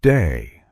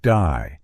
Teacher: in the Australian accent they may say words like day more like die